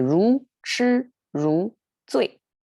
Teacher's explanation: We have two rising tones and then flat and then fall. So it's kind of like a good closing way to make it emphasize by falling tone at the end.